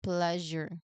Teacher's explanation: You start with a pull cluster sound, and you hit that beautiful voiced zh sound in the middle. It gives the word a soft, luxurious quality.